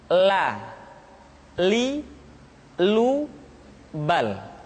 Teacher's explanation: diucapkan dengan mengangkat ujung lidah kita, dengan disentuhkan dengan langit-langit. Di depan pengucapan huruf ra. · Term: huruf la